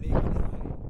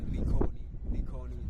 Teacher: You stress almost every syllable right there.